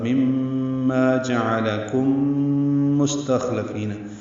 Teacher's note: ہے، جعل یہ جلدی ادا کریں گے، کم کاف باریک ہے، میم ساکن کے بعد میم آنے کی وجہ سے ادغام شفوی ہے، غنہ ہوگا